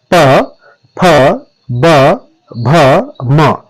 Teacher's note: तो ओष्ठ ध्वनियां कौन कौन सी हैं, इसमें पूरा पवर्ग आएगा, प, फ, ब, भ, म। यदि आप उच्चारण करके देखेंगे तो आप खुद महसूस करेंगे कि पहले आपके होंठ मिलते हैं और फिर खुलते हैं